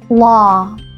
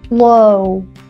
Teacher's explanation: compare the ah as in father with the o the diphthong o as in low